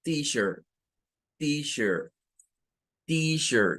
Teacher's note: Es el sonido ch, CH, y pueden notar que aquí no aparece el sonido de la E como una E, sino como una schwa, que es un sonido o, y se agrega la R